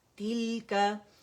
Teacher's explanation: لام پہ ہم نے ٹک جانا ہے کیونکہ اس پہ سکون ہے